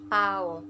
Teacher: O-nya ini tidak mengatup secara penuh, tidak tertutup secara penuh. Artinya O-nya itu hanya separuh, seperti ini bentuknya.